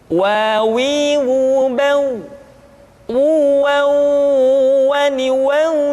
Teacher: diucapkan dengan cara memancungkan dua bibir kita